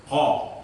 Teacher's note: Tidak, tapi kaf itu adalah bagian lidah yang paling bawah ya, bagian lidah tapi yang paling bawah atau yang paling pangkal. Qaf keluar dari pangkal lidah. Pangkal lidah dekat dengan anak lidah dan mengarah ke atas serta menepati dengan langit-langit mulut yang atas. Yang namanya menepati dengan langit-langit mulut yang atas itu berarti menempel ketika proses melafadzkan huruf qaf ya.